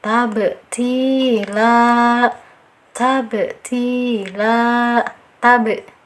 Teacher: Baru kita beri sifat qalqalah, dipantulkan sedikit saja karena ada di tengah kalimat, masuknya ke qalqalah sugro